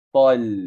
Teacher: Ta kuat masuk pada lam sukun nipis, tal.